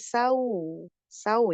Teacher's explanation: Kalau wau sukun dibacanya u ya. Jangan sau, jangan sao tapi saw sau ya.